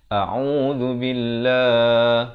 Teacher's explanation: Lafaznya hamzah baris atas a, makhrajnya di pangkal kerongkong, ain di pertengahan kerongkong, 2 harakat, a'udzu di hujung lidah, a'udzu billah, dan lafz jalalah dibaca nipis 2 harakat